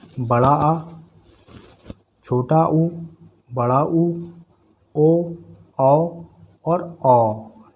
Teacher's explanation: जिन स्वरों के उच्चारण में जीभ का पश्च भाग यानी कि पीछे का, पश्च मतलब है पीछे का भाग काम करता है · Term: पश्च स्वर